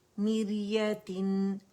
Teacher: را باریک ہے، اوریجنل کسرہ آ رہی ہے را سکون سے پہلے